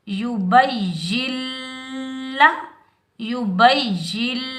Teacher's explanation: दरमियान में नून साकिन जो आ रहा है इसको हम अदा नहीं करेंगे